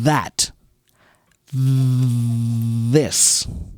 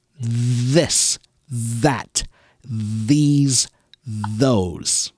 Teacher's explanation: now listen to the voiced sound um that this so now I'm still blowing air with my tongue between my teeth but I'm also kind of making this buzzing sound